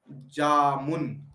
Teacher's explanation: जामुन देखो आप जा के अंदर दो समय लग रहा है। मुन में एक बराबर-बराबर समय लग रहा है। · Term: द्विमात्रिक